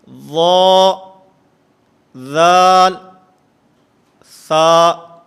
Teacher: نوک زبان اور ثنایا علیہ کے کنارے، اس سے 3 حروف ادا ہوتے ہیں